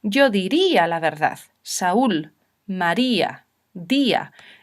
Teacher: Hay situaciones en las que la I y la U, que deberían ser débiles, en realidad se pronuncian con fuerza.